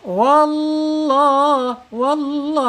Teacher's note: Penekanin huruf lam jalalah ya. sebelum lam jalalah harakatnya fathah ini wajib dibaca tafkhim tebal tebal ya